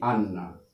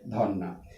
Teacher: এই যে র বর্ণটা আছে, হলন্ত রটা উঠে যাবে, হলন্ত রটা উঠে যাবে, আর দ্বিতীয় শব্দের শুরুতে যে বর্ণটা আছে এটি দুবার উচ্চারণ হবে, অর্থাৎ এই যে রটা উঠে যাবে আর এই যে দন্ত নটা এটি দুবার উচ্চারণ হবে।